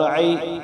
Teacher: یا ساکن سے پہلے زبر تو یا لین ہوتا ہے تو اس کو ایک الف مقدار سے کم لمبا کریں